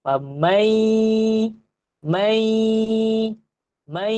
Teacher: Famai, mai, mai, mesti rasa getaran di hidung. Kalau famai, famai, famai, famai, dia tak ada dengung, dia tak tepat lagi. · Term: idgham ma'al gunnah